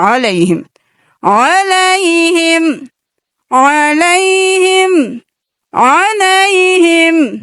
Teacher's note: آئین کو گلے کے درمیان سے نکالے، حمزہ کی آواز نہ آئے ، علیہم نہیں کرنا، علیہم علیہم علیہم علیہم سواء علیہم ان